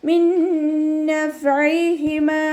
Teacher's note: നൂൻ സാക്കിനയിലുള്ള നൂനിനെ നമ്മൾ അടുത്ത നൂനിലേക്ക് ലയിപ്പിച്ചിട്ട് ഒന്നയോടുകൂടി ഓതി കൊടുക്കുക